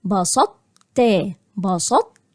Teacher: هقول بسطت، بسطت، يبقى أكني هقول طاء لكن هي الطاء تحولت لتاء ولكن تبقى فيها صفة الاستعلاء. يبقى هنا هبدأ أكني هقول طاء بدون قلقلة وبعد كده أخش على التاء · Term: الإدغام الناقص